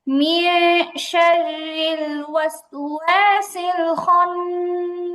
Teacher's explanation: নুন সাকিনের পরে শিন আসছে, ইকফার হরফ, আর হচ্ছে গুণাটা পাতলা হবে।